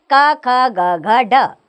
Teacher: इनका उच्चारण स्थान है कंठ यानी कि गले से इसका उच्चारण होता है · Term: कंठस्थ व्यंजन